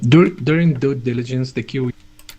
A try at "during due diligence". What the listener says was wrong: I think your D is a little bit against your teeth.